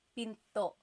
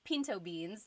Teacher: Do you hear the glottal stop when I say pinto?